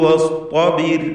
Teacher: അന്ത്യത്തിലുള്ള റാഇന് സുക്കൂനുണ്ട്, തൊട്ടു മുമ്പിൽ കസ്റുണ്ട്. റാഇന് തർക്കീഖാണ്. വസ്തബിർ എന്ന് നേരിയ റാഇനെ ഉച്ചരിക്കുക.